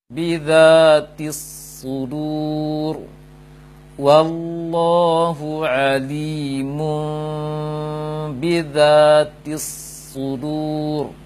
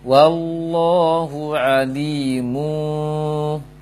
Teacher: Hilang mimnya. Dia harus diganti menjadi mim yang ikhfa, mim yang tersembunyi atau ada celah kecil antara bibir atas bibir bawah.